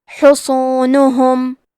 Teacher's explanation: کلمت حصونہم میں حرف الصاد ہے. صاد حروف التفخیم میں سے ہے تو ہم یہ حرف کو بھاری آواز میں پڑھیں گے. نون اور ہا پہ پیش ہے تو ہمیں یہ دونوں پیش کو ظاہر کرنا ہے.